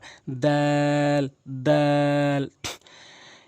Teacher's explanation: জিহ্বার আগা সামনে দুইটি দাঁতের গোড়া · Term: দাল